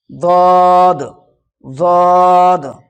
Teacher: জিভের কিনারা এবং তার বরাবর উপরের মাড়ির দাঁতের গোড়ার সাথে লাগিয়ে উচ্চারিত হয় দদ।